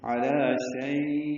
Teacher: اب شئی لمبا کر دیں گے، علی شئی، اب یہ لین وقفی ہے یا لین عارض للسکون ہے اور حمزہ ساکن جھٹکے سے ادا ہوا